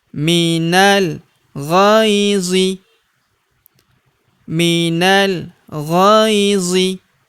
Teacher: Huruf gho kita ayun sekali karena terdapat ya sukun di depannya